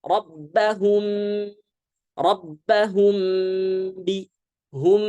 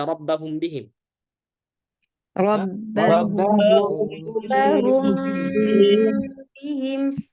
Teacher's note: Jadi dibaca tipis ya, jangan dibaca tebal gunnahnya.